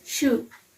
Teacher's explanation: it's place of articulation is palatal alveolar that means our tip of tongue is touching alveolar Ridge